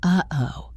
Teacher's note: It is when you stop the air in your throat instead of making a sound with your tongue. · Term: glottal stop